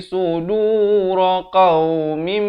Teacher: Tanwin bertemu mim, idgham bi gunnah. Masuk beserta dengung di sini. Daripada qaumin jadi qaumim, dua harakat, barulah mu'minin.